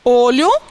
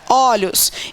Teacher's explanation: alguns vocábulos sofre alteração de timbre da vogal tônica · que é que é a alteração no timbre da vogal e no singular eu tenho uma vogal fechada · No singular, eu tenho uma vogal fechada, olho, e no plural eu tenho uma vogal aberta, olhos